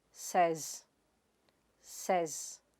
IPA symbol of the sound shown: sez